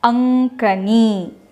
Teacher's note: Here after the anuswara, the there comes ka. So the anuswara gets converted to the nasal sound of ka, which is the nasal sound of ka is nga.